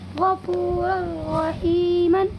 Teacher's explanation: دو زبر کی تنوین کے بعد یہ را آیا ہوا ہے، اسی لیے اس تنوین کی آواز کو بغیر کسی غننے کے را میں بدل دیں گے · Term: ادغام تام